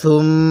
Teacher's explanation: নাকের বাসি দ্বারা গুণনা করব, কারণ মিম এবং নুনের উপর তাসদিদ হলে সেখানে আমাদের গুণনা করতে হয়। তো মিমের উপর তাসদিদ আছে, এজন্য আমরা এখানে গুণনা করব।